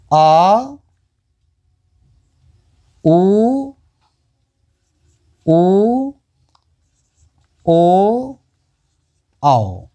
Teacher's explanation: इनको बोलने में मुख का पिछला हिस्सा प्रयोग किया जाता है, इसलिए वो पश्च स्वर कहलाते हैं